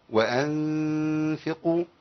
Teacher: قفلت بوجود اطراف الثنايا مع بطن الشفه السفلى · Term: الغنه